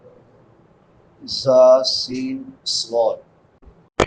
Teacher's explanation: 3 حروف جو سیٹی کے ساتھ ادا ہوتے ہیں، زا سین صاد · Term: سیٹی والے حروف